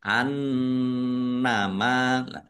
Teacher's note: Annama nun tasdid dibaca ghunah atau mendengung. Ditahan biar tampak dengungannya.